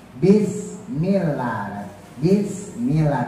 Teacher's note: dua makhraj ba mim yang bagian bibir depan ya.